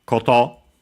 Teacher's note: accent on the last mora